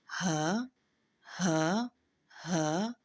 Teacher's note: ہا کی ادائیگی میں زبان کی جڑ کو خلق کی طرف دبائے بغیر باریک آواز میں پڑھیں، اور یہ خلق کے سب سے آخری حصہ جو سینے کی طرف ہے وہاں سے ادا ہوتا ہے